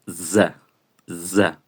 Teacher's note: Pasaríamos a la Z, que la Z también tiene su particularidad porque no suena como la Z de castellano, que es Z C z, sino esta es como llamo yo, Z con zumbido, es Z. za zumba un poco en la boca a la hora de pronunciarse.